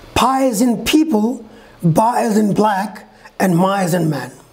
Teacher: Two lips close together to stop the airflow and sudden release, bilabial.